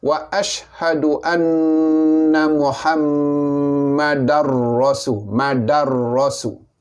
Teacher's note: Oleh kerana tanwin bertemu dengan ra, selepasnya adalah huruf ra, bunyi ra, maka datanglah hukum idgham, memasukkan bunyi tanwin ke dalam ra, idgham bila gunah dengan tiada dengung. Jadi kita baca dia wa ashhadu anna Muhammadar rasul.